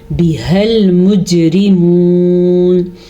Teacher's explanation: ہا کے تلفظ کا دھیان رکھنا ہے کیونکہ یہ ہا حلق کے آخری حصے سے نکلتا ہے. اور جیم پہ ہمیشہ کی طرح ہم نے بھی پھر قلقلہ کیا ہے, جھٹکا دیا ہے کیونکہ جیم حروف قلقلہ میں سے ہے.